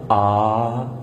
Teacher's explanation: حلق میں تھوڑی سی رکاوٹ کے ساتھ